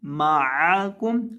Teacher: دیتے ہیں معاکم، معاکم نہیں، معاکم عین کو ادا کریں گے، عین کو حلق کے درمیان سے ادا کرتے ہیں